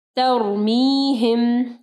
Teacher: را جو ہے ہیوی پڑھی جائے گی کیونکہ را سے پہلے والا جو حرف ہے وہ زبر ہے